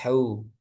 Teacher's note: hu ha tengah tenggorokan ya